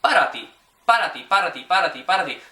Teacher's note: when you say that initial P, there should be very minimal air hitting your hand when you say it. So if you're saying para ti with some air coming out, it's an indication for native ears.